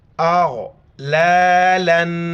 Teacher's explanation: امزہ کو غین کے ساتھ ملائیں گے اور غین کو موٹا کر کے پڑھیں گے · اس کو گاف نہیں پڑھنا ہے، غین پڑھنا ہے